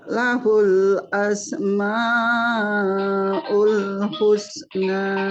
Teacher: Nah, hati-hati madnya masih kepanjangan Bu, masih terlalu panjang. Madnya kita ambil 4 harakat ya.